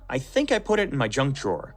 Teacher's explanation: when we hold out the word think like that it's a way of showing we're not sure